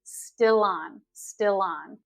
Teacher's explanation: we kind of allied the L sound to the beginning of a word that begins with a vowel